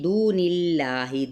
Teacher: دو پہ واو مدہ جس میں جلالہ کا لام باریک